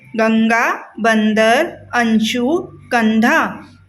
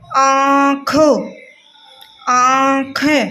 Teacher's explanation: अनुस्वार का ओनली नाक से होता है। इसकी जो ध्वनि निकलती है वो नाक से निकलती है वाइब्रेट के साथ में।